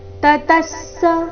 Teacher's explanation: ವಿಸರ್ಗದ ಅರ್ಧ ಸ ಮುಂದಿನ ಪೂರ್ತಿಸ ಒಟ್ಟಿಗೆ